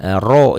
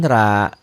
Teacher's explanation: Tebal itu bunyi o. Kalau tipis itu bunyi a ya.